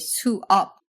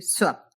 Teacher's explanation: if you're speaking quickly you'll slide those two syllables together into Swap this can generally happen when the first syllable ends